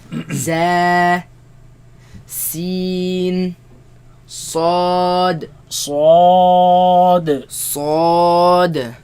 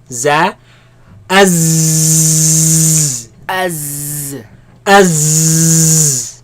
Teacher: They come from the tongue placed behind the bottom teeth. Right? Some scholars, they consider the tip of the tongue placed behind the bottom teeth, but the sound comes from between the tongue now and the empty space between the teeth and the tongue.